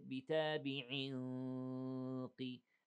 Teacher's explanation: the sound of the إخفاء is the same sound of the heaviness of the قاف, not all the way, but that it is something, you know, suitable to the heaviness or the sound of the heaviness of the قاف, okay?